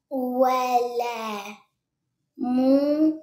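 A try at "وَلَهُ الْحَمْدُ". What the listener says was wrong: No, that's a ha. Yeah, wa lahul hamdu.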